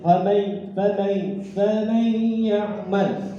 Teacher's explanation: ini yang samar juga, ya, keluar dari hidung karena gunnah